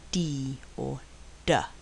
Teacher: The lower is pulled down and the tongue withdrawn from the ridge to release the pressure. This is a voice sound and there is no rush of air but only a tiny explosion. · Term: D sound